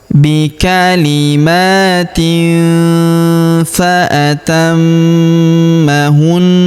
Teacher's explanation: Kemudian tanwin in huruf tin yang ini ya bertemu dengan huruf fa, maka tanwin innya melebur ke huruf fa. Kita baca dengung dan samar. Dengungnya kita tahan 2 sampai 3 harokat